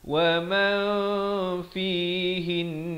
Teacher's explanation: Kerana nun itu bersabdu. Dia kena dengung 2 harakat.